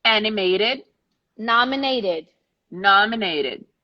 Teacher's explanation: Both end the same way, pronounce the E because the last sound is the sound of T